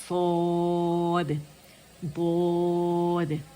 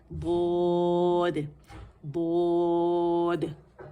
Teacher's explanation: अकल दाड़ों से मैंने ज़बान के मोटे किनारे लगाना शुरू किया, और साथ में ज़बान की जड़ भी उठी